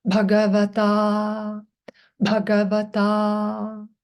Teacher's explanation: Bha aspirate, long A at the end.